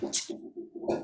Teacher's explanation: with the glottalized C wedge, it's that ch, the harder sound